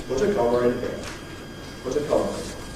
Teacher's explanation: we normally would say in connected speech as ‘put a comma in [ ˈkɒmər ɪn ] here’ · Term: intrusive r